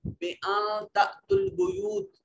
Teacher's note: बिआन तअतुल बुयूत, नून साकिन है, इसके बाद ता हुरूफ इख्फा में से आ गया, यहाँ नून को अपने मखरज में छुपा कर पढ़ेंगे, इख्फा होगा